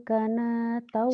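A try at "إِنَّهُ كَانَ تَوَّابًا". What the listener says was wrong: Salah, kayaknya panjang mantobi'i. Ba-nya jadi apa ya Bu? Tawwaba.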